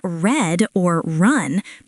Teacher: In red or run, the tongue curls slightly and doesn't touch the roof of your mouth. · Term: R sound